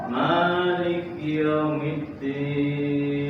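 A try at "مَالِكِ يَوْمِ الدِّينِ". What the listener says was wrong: Tambahkan dalnya. Maliki yaumiddin.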